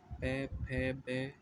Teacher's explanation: इन अक्षरों के उच्चारण में दोनों होठों का प्रयोग होता है। द्योष्ठ मतलब दोनों होठ, पै, फै, बै, जब हम इनको बोलते हैं तो हमारे दोनों होठों का यूज होता है।